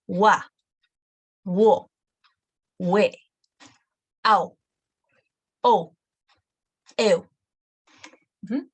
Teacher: U is not pronounced to its full length, it's a quicker one.